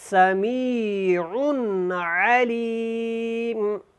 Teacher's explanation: نون تنوین ہے اور آگے بھی عین ہے، حروف حلقی میں سے ہے تو آپ نے یہاں پہ اظہار کرنا، اخفا نہیں کرنا